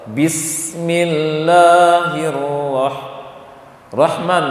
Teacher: Kalau sin, dia mengalirkan suara dan juga nafas.